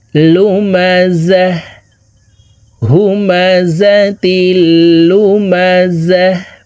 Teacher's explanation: ওয়াকফের ক্ষেত্রে হার উচ্চারণ করব এবং হাকে সাকিন করে ফেলব। হাকে যখন সাকিন করব, এই জা হাকে ধরবে, হার উপরে জজম ব্যবহার করতে হবে।